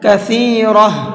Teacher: جب ہم نے یہاں پر وقف کیا ہے تو اس گولتا کو ہا بنا کر کے پڑھا ہے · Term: گولتا ہا بن جاتی ہے